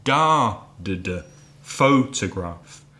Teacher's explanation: photograph three syllables first syllable stressed